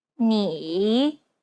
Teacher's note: a third tone listen to an example which uses this tone it's the most unique tone out of all the tones because the pitch dips and then Rises